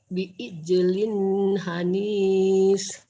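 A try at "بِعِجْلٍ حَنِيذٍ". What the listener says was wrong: bi'ijlin hanil. Jangan hanis, hanil. Ya begitu, jangan hanis ya. Hanil, mirip-mirip Pasaparudin, hanis. Jangan, zal ini. Hanil.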